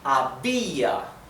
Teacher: However, since it carries the sílaba tónica, the stress of the word is on the I